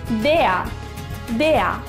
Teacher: D y E pronunciamos tal como en español y la R está delante de un consonante, así que la pronunciamos como una A.